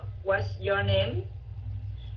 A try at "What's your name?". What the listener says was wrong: Đây là WH question, WH and how question. Mình thường thường mình xuống giọng. What's your name? What's your name? Chứ không phải what's your name? What's your name?